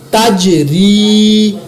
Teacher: یہاں پر میں نے جیم پر قلقلہ کیا